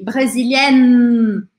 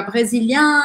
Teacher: Então é um N aqui, eu tenho que morder um pouquinho a minha língua para fazer esse N. No masculino, eu não pronuncio o N, eu só faço um som anasalado, e aí fica brésilien, olha a minha boca, brésilien.